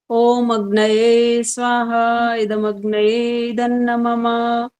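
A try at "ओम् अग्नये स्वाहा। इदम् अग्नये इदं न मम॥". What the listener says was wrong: जहां विराम है वहां रुके नहीं हो, दोबारा बोलो, अब ध्यान रखना।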